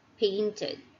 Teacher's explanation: Again, because the last sound of the simple form of verb ends with the sound of t. Therefore, the ed sounds like id. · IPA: /id/